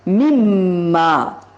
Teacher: ادغام مع الغنہ جب ہوتا ہے تو نون حذف ہو جاتا ہے، نون میم میں مدغم ہو جاتا ہے اور ادغام غنے کے ساتھ ہو جاتا ہے